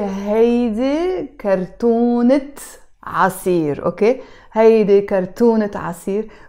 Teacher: No, because there's a T مربوطة, right? When this T مربوطة is followed by another noun, in this case عصير, which means juice, I have to pronounce the T مربوطة in this case, and I have to say هيدي كرتونة عصير.